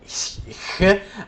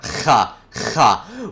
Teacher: the sound that H makes is called the voiceless glottal fricative , although as a Greek speaker I don't actually say h,